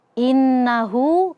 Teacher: Ee di ayat innahu nun yang bertasydid. Nah, di sini ada ghunah musyaddadah dibaca dua harakat